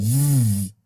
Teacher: sound when you say V that is called a voice consonant the vocal folds vibrate and then you have vibrations between your lower lip and your teeth upper teeth